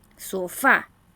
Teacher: La palabra sofá se carga la voz en la última sílaba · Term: palabras agudas